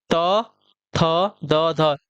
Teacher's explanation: त थ द ध, ये आपके दंत वाले हैं